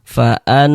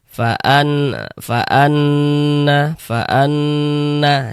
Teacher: Nah, maka ini karena dia ghunah kita gunahkan cara bacanya. Digunahkan tuh ya didengungkan. Jadi suaranya itu kita tahan, kita panjangkan sejenak. Faan. Nah, di bagian annya itu kita tahan, kita panjangkan sejinak suaranya.